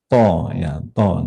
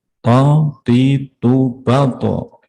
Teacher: Tapi kalau to itu monyong. Walaupun harokatnya kasroh, mulutnya harus monyong lebih dulu. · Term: huruf istilah